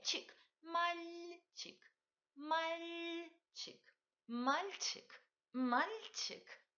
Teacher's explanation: il faut palataliser li au milieu. Coupez le mot en deux.